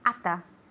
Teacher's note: at ends with a T, the next word begins with the TH, así que esa T desaparece. Lo hacemos en una palabra, ata.